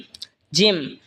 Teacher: জিহবার মধ্যখান তার বরাবর উপরে তালের সঙ্গে লাগে উচ্চারণ হবে জিম